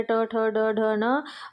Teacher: मूर्धा में आपका ट, ठ, ड, ढ, न, है ना।